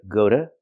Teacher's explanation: the t is pronounced like a fast D